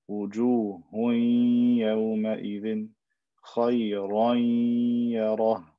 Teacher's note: And I stretch this for two haraka, right? I give the ghunna a length of two haraka